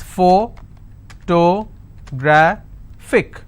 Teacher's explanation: since it's ending with IC, I will stress on gra. So whatever is the word ending, like you saw, look at the word ending and stress on the previous one.